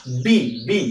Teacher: यो दुईवटा ओठ जोडिएन भने बीको उच्चारणै हुन सक्दैन। त बी उच्चारण गर्दाखेरि बी यसरी रोकियो कि फोक्सोबाट आएको श्वास बी बी यहाँनिर रोकियो।